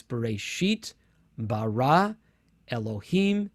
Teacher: every one of these words in genesis 1 1 is either stressed on the last syllable or the second the last syllable